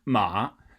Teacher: you just want to stick that tone sort of in the higher end of your range